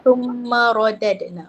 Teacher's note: Ra tebal. Betul, dia tafkhim, ra tafkhim, dia panggil ra tebal